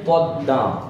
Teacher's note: এখানে দয়ের উচ্চারণ দুইবার হয়েছে, শুধুমাত্র যেটা অতিরিক্ত যুক্ত হয়েছে ময়ের কারণে আ ধ্বনিটা একটু নাসিক হচ্ছে আ বলছি। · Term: দ্বিত্ব